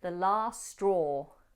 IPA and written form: ðə lɑːst strɔː (the last straw)